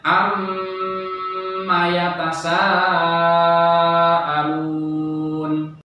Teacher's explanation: cara membacanya dengan ghunnah musyaddadah karena disitu ada huruf mim bertasydid dengan sendirinya · Ini cara membacanya adalah ketika di dalam ayat Al-Quran itu ada huruf mim yang memang bertasydid dengan sendirinya, atau di situ juga ada nun yang bertasydid, maka dibaca mendengung dengan disangatkan dan ditahan selama kurang lebih 1,5 alif atau 3 harokat atau 3 ketukan dengan intonasi sedang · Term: gunnah musyaddadah